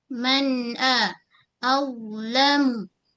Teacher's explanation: Pada huruf wa kita tebalkan ujung lidah kita keluar sedikit. Kemudian menyentuh ujung gigi kacip atas